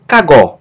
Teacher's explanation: Sílaba tônica é a última, gó.